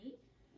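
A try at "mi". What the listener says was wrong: There, you slid into it.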